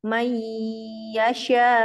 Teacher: Mai ya. Kemudian shin tafashi sebar suaranya